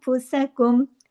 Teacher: फुसकुम, ये यहाँ भी देखिए नून साकिन के बाद फा आ रहा है, इख्फा हो रहा है, इख्फा हकीकी गुन्ने कामिला हो रहा है, छोटा गुन्ना हो रहा है